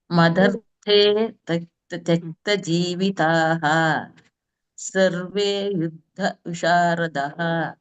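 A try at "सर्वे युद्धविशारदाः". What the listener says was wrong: ವಿಶಾರದಾಃ ದಾ ಮೇಲೆ ಹಾ ಹೇಳ್ಬೇಕು.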